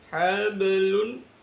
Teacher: Baknya dibaca mantul, tapi pantulannya sughra, kecil. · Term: qalqalah sughra